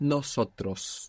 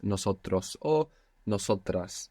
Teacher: You pronounced an S there, which was very good. Most English speakers find themselves accidentally saying nosotros with a Z. Not nosotros, but nosotros.